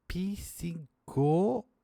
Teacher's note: Consoante muda, P. Mas na hora de pronunciar, eu adiciono um I que teoricamente não era para estar ali. A mesma coisa acontece com a palavra óbvia, que também tem uma consoante muda. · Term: epêntese